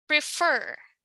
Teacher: the stress is on the second syllable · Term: stressed syllable